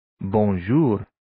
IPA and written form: bʌn'ʒʊr (Bonjour)